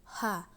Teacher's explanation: huruf ini keluar dari tenggorokan yang terjauh ha kesalahan sering terjadi karena hal ini sering keluar dari dada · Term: huruf h